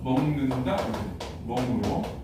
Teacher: 그래서 여기를 해보면 기역하고 니은이 만났지? 기역하고 니은이 만나니까 이 기역이 이음으로 바뀌는 거야. 그래서 먹는다 이렇게 멍으로.